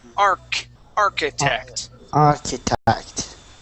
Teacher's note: here is AR architect this is one of the words where the CH is not uh pronounced like a CH it's pronounced like a k